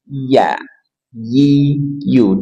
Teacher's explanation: Ada huruf ya dari tengah lidah ditekan ke langit-langit di atasnya